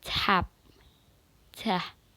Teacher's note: First words is tap, step, and pat. Tap because T followed by vowels. T is aspirated.